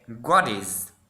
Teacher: In American, we say what is. The T sound will be replaced by the D sounds.